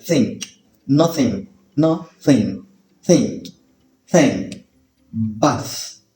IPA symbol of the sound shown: θ